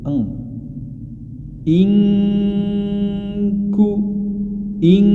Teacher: pertama nun sukun bertemu dengan huruf Kaf ketika [Musik] di pertemukan nun sukun dengan huruf Kaf maka dia menjadi suara dengung atau Eng